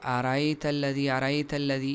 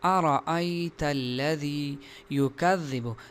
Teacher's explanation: یعنی اس حمزہ کو بالکل نرمی کے ساتھ پڑھتے ہیں، حالانکہ حمزہ کو سخت پڑھنا چاہیے